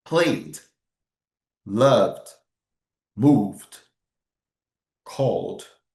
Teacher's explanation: voiced sound, like B, D, V in the end of the word, okay? We pronounce D, just D.